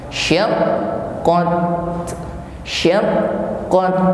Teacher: Jangan lupa huruf ta yang di akhir ayat atau berharokat sukun, maka tampak di sini sifat hamas, ada nafas yang mengalir. Namun nafas yang mengalir pada huruf ta ini tidak berlebih, tidak banyak.